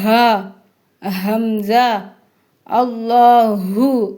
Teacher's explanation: ஹம்ஸா ஹா இது ரெண்டும் சொல்லும் பொழுது தொண்டைக்கு கீழ ஒரு அதிர்வு இருக்கும். எப்படி ஆரம்பத்துல சொல்லும்போது மேல ஒரு அதிர்வு இருக்கோ, அதே மாதிரி தொண்டைக்கு கீழ இருந்து சொல்லும் போது, அதற்கு கீழ ஒரு அதிர்வு இருக்கும். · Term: தொண்டையின் இறுதியில